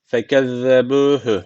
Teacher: Bakın ze burada peltek ve ince.